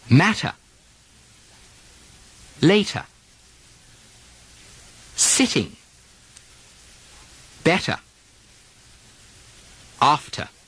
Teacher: the English don't change the medial T's to D's the way Americans do in words like matter, later, better. Keep that nice, clean T sound.